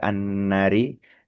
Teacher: Annari paling lebih mengingatkan lagi untuk nun tasdid itu pastikan ee dibaca lebih lama gitu ya. Agak lamaanlah karena hukumnya ghunah